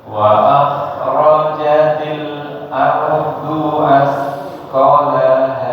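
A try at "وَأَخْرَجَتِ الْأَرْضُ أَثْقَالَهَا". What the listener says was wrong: Nah, sama ujungnya ko-nya panjang. Asqalaha. Nah, asqonya sudah betul. Du-nya yang panjang, kepanjangan dikurangi sedikit, Pak. Ardu asqalaha.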